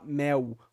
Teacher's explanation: A gente fala mel, como se fosse um U mesmo. Então, fazendo um ditongo, que é um encontro consonantal, um encontro vocálico, mas com um decaimento, né?